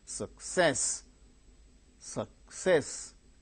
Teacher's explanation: Two syllables are there, second syllable gains stress.